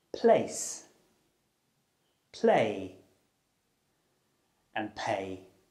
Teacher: This means that you use both of your lips to block your mouth. The p sound is made through the mouth, and it's unvoiced, which means that you don't use your vocal cords to make the sound. It's defined by the shape of your lips and the motion of airflow through your mouth. · it's called the voiceless bilabial stop. This means that you use both of your lips to block your mouth. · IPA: /p/